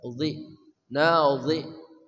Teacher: Ujung lidah bersama ujung gigi seri atas. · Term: Dha